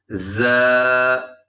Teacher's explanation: اس حرف کے اندر سیٹی ہے، اور اس کی آواز ہوتی ہے جیسے شہد کی مکھی کا ساؤنڈ ہوتا ہے